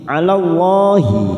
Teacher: 'ala Allah lam jalalah yang didahului fathah kita baca tafkhim.